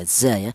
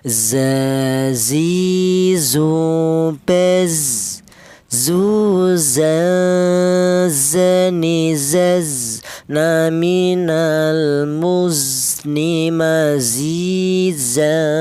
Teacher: Huruf za ini keluarnya huruf berasal dari ujung lidah menyentuh pangkal gigi seri bawah